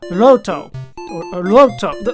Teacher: I believe that it's the liquid consonant, which means that it should be pronounced Loto, or Loto. Like, it's almost like a D when you do it.